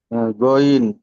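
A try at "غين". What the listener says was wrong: টান দেন, গইন তিন আলিফ পরিমাণ টান আছে।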